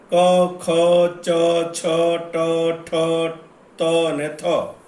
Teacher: નાદતંત્રી મહદ અંશે અલ્પ માત્રા એટલે કે આપણે કહી શકીએ કે અકંપ અવસ્થામાં કંપે ને તે ધ્વનિ ઉત્પન્ન થાય તે અઘોષ ધ્વનિ છે.